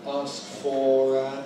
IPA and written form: ˈɑːsk fɔːr ən ... (ask for an)